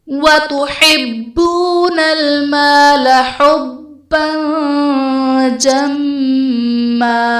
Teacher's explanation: حُبًّا جَمًّا میں با حرف قلقلہ مشدد ہے تو یہاں پر قلقلہ خوب جماؤ کے ساتھ ادا کریں گے ، اور با پر دو زبر کی تنوین، تنوین کے بعد